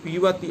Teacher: कुछ लोग जो है पीवती ऐसा बोल देते हैं, दंतोष्ठ उच्चारण करते हैं, वो गलत है। यहाँ पर ध्यान करके ये सब पीबती ऐसा बोलना पड़ेगा।